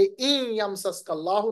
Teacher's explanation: नून साकिन के बाद या आ रहा है, इदगाम बगुन्ना